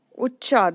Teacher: the first cha is half and then pronunciation of next cha is full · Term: half cha plus full cha